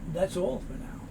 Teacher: the s rather moves over to the a